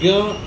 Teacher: ज्ञ में हम लोग ग और य दोनों का उच्चारण करते हैं, तो दो चीज़ का मिक्सचर है।